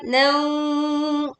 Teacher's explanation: Dengungkan, leburkan tanwin fathah ke waw disertai dengung